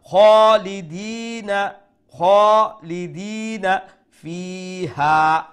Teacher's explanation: Fi is going to be one alif long, then the ha is going to be 3 alif long due to the maddul munfasil.